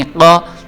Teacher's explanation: ول من خا، نون زیرنی، ول من خانی، قاف زبر قا، قاف جو ہے یہ حروف حلقی میں سے ہے، اس کو ہم موٹا کر کے پر کر کے پڑھ رہے ہیں